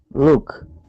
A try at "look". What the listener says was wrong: So instead of, when you were reading it, it sounds more like an oo sound, like Luke, and I want it to sound like look, look. Look. Not luck. So this is luck and this is look.